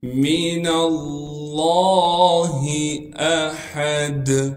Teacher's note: حمزہ کو بغیر جھٹکے کے پڑھیں گے، ہا کو صاف کر کے گلے سے نکالیں گے، دال پر جب وقف کریں گے پھر دال میں قلقلہ ادا کریں گے۔